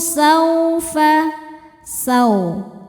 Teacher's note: Ada hukum harfulin sebab ada wau sukun didahului harakat fathah. Cara bacanya dilembutkan atau dilunakan.